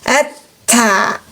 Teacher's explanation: Jadi bunyi huruf ta tipis karena istifal.